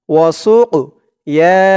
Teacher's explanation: কফটা কলকলার হরফ ধাক্কা দিয়ে পড়তে হবে